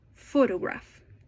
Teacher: In photograph, the first syllable is stressed.